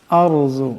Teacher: ইজা দুক্কাতিল আরজু, আরজু এখানে রা এবং জদকে মোটা আওয়াজে পড়তে হবে